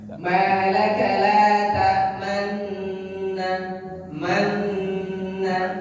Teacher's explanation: Nun tasdid dibaca pencucu di tengah dengung. · Dengungnya nun itu mencucu ke depan baru tarik ke belakang, baru panjang. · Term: ismam, bacaan ismam